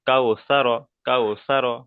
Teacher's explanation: ওয়াউলিনকে নরম আওয়াজে তাড়াতাড়ি পড়তে হবে, টান দেওয়া নিষেধ